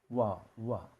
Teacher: Jadi ini bibir ketemu bibir bukan bibir ketemu gigi. Tapi kalau orang Indonesia kan kalau wa kan bukan wa tapi wa wa pakai gigi. · Huruf waw, makhraj, kedua bibir membulat. Wa. Jadi ini bibir ketemu bibir. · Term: huruf wau